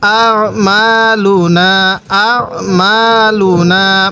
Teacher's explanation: আ মা, লাম পেশ লু, নুন আলিফ জবর না, আ মালু না, আ মালু না। মিমের মধ্যেও এক আলিফ টান দিব, নুনের মধ্যেও এক আলিফ টান দিব।